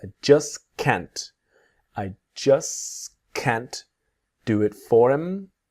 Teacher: So the next examples of just, the T disappears